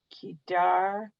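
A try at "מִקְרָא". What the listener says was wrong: Meek, It's a resh. It's not a dalid. So it's r. So it's meek, ra, a.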